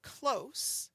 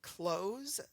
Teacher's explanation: The s changed from an S sound to a zed sound and that changes the word.